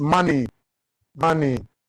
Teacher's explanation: Trochaic foot, that is stress syllable followed by unstressed.